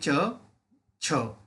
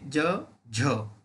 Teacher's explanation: जिभेचे पाते कठोर तालूला लावून ज्या वर्णाचे उच्चार होतात त्यांना आपण म्हणतो तालव्य